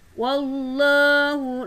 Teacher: lafaz jalalah dibaca tebal atau mufakhamah karena lafaz Allah didahului huruf waw yang berharokat fathah